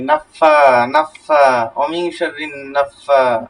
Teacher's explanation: কিন্তু নাতে টান নাই ফাতে টান আছে